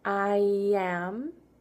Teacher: for the I sound, instead of saying I am, we make a small Y sound.